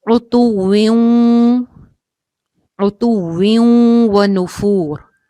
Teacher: تو یہاں پہ غنہ کر کے ادغام ہوگا